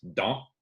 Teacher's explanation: the dans all by itself is dans with that French nasal sound, but because that consonant is followed by a vowel, the z drags on to the next one.